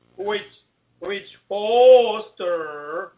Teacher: And you're pronouncing that WH like it's HW, right?